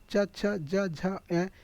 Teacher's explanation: तालब्य वर्ग का मतलब होता है अर्थात तालु, उच्चारण स्थान तालु होता है। जो हमारे जीवा के ऊपर का जो भाग होता है तालु, कह सकते हैं कि मुंह के भीतर की जो ऊपरी छत है उसका पिछला जो भाग होता है उसको तालब्य कहा जाएगा।